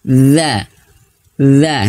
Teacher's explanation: huruf dalal ini makhrajnya Tengah lidah mohon maaf ujung lidah ya ujung lidah menyentuh ujung gigi seri atas kita d d atau sederhananya digigit sedikit ujungnya ujung lidah kita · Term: huruf dza